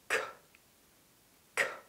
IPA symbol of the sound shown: k